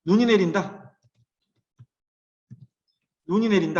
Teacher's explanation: 눈이 내린다 할 때는 눈을 길게 발음하지